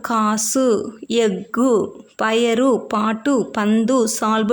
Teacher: வல்லின உகரம் வந்து சொல்லோட இறுதியில வரும்போது ஒரு மாத்திரைக்கு பதிலா அரை மாத்திரை அளவா ஒலிக்கும் இப்படி ஒலிக்கிறதுதான் இப்படி தனக்குரிய ஓசையில குறைந்து ஒலிக்கிற உகரம்தான் குற்றியல் உகரம் சரியா